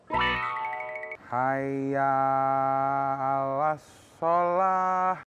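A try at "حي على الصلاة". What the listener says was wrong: Hayya 'alas sholah, ya-nya jangan dipanjangin. Jadi hayya 'alas sholah itu harusnya hayya 'alas sholah. Haknya paling ujung itu hak besar. Jangan juga di awalnya hayya 'alas, jangan juga.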